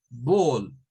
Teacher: cuando la A está acompañada de la L, suena a una mezcla entre una A y una O